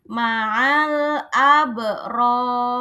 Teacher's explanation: Ro-nya ini aslinya berharokat kasroh, tapi dia terpaksa harus mati karena apa? Karena wakof, karena berhenti.